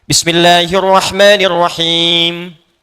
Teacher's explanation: Ya, itu mesti muncul ketika Anda baca al-Fatihah kan ujungnya mim tuh rata-rata dengan nun. Itu selain diucapkan di bibir ya dari lisan ke bibir mesti ada dengung ke ke hidung sedikit